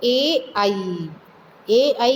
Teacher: तो ए आई क्या है, ये कंठ तालव्य स्वर है, यानी ये कंठ से भी बोले जाते हैं और तालु से भी बोले जाते हैं